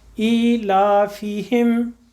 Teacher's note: فا کے نیچے زیر ہے، ہلکا سا یا کی طرف اسے ٹرننگ دے دیجیے، ہلکی سی بالکل